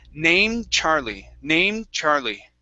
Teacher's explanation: So that D almost disappears in there.